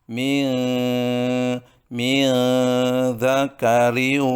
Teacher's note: Inna khalaqnakum, berdengung. Kemudian nun mati bertemu dengan zal, dibaca dengan mengandung bacaan ikhfa, samar